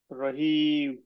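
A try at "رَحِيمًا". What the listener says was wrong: টানি আর একটু।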